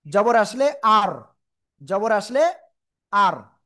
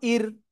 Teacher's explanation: র অক্ষর সাকিন তার ডাইনে জবর বা পেশ হলে মোটা আওয়াজে পড়বো, আর র সাকিন তার ডাইনে জের হলে চিকুন করে পড়বো।